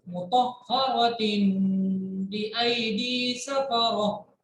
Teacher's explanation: तनवीन के बाद बा है तो नून की आवाज को मीम से बदलेंगे और गुन्ना करेंगे